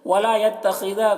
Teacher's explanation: خا کو پر پڑھیں گے، خا حروف مستعلیہ میں سے ہے، اور دال کو باریک پڑھیں گے